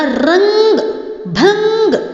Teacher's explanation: रंग बोलते हुए ध्वनि जो थी, आवाज केवल आपके नाक को टकरा के निकली थी, आपके नाक से निकली थी। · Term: अनुस्वार